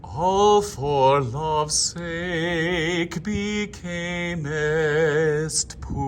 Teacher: sustain, ladies and gentlemen, with that double oo vowel and the R at the very end